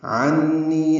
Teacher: عین وسط حلق سے ادا ہوگا، نون مشدد پہ غنہ ہے، نی یا مدہ ہے.